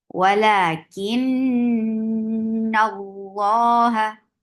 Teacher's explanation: तो जब भी नून और मीम के ऊपर आपको शद का साइन नजर आए, तो आप नून और मीम के ऊपर अकमल गुन्ना करेंगे। अकमल का मतलब है सबसे लॉन्गेस्ट गुन्ना।